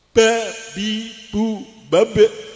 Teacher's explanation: Jadi ini qalqalah maka jangan banyak nafas keluar.